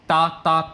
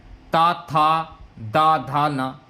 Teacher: जब धा बोलते हैं तो जीभ जो है आपकी दांत से टकरा रही है